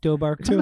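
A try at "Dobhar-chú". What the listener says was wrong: No, there's not even a B in that one. It's Doarcoo.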